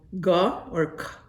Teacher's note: A K in Mohawk is a G sound okay, but if it's with a H it's a soft K.